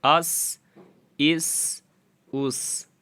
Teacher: یہ پیچھے والا جو ہے سین، انہیں سیٹی والا حروف بھی کہا جاتا ہے، تو اس میں سیٹی کی آواز آئے گی